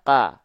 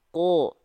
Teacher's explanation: Huruf qaf ketika dia berharokat fathah, dia nggak dibaca ka, tapi dia dibaca ko. Kenapa? Karena dia adalah huruf yang tebal.